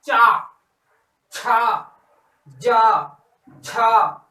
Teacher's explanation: इन शब्दों को बोलने में हमें कुछ समय लगता है और संघर्षण से उत्पन्न होते हैं। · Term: स्पर्श संघर्षी व्यंजन